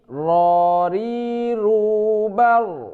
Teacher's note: getarnya itu di ujung lidah saja. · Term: bunyi huruf ro